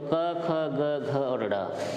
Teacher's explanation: तो क, ख, ग, घ और ड़, इनका जो उच्चारण स्थान होता है वो क्या होता है, कंठ होता है। इनको ये जो व्यंजन है वो कंठ से उच्चारित किए जाएंगे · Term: कंठीय वर्ण